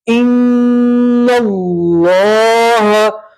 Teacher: نون کے اوپر تشدید ہے، نون میں گنہ کریں گے اور اللہ کا لام پور پڑھیں گے. نون کو سیدھا اس والے لام سے ملائیں گے، یہ الف اور لام نہیں پڑھیں گے، ٹھیک ہے.